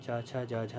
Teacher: चा छा जा झा ये तालव्य वर्ग के अंतर्गत आते हैं।